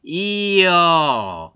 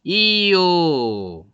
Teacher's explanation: 반모음 J하고 요 단모음들이 결합이 되면 이렇게 이중모음이 되는 것들이 있다.